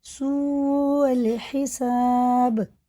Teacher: دیکھیں یہ مد متصل ہے کیونکہ یہ حمزہ آ رہا ہے اس کے بعد، اور واو ساکن سے پہلے پیش بھی ہے، یہ بھی الٹے پیش کی طرح کھینچ کے پڑھیں گے تو یہ 5 الف کے برابر کھینچ کے پڑھنا · الف نہیں پڑھا جائے گا، حمزہ سیدھا لام میں لگے گا